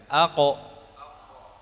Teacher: Jadi dari pangkal lidah bertemu dengan langit-langit yang lunak. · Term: Qaf